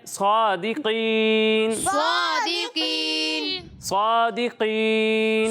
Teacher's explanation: قاف کو پر پڑھنا ہے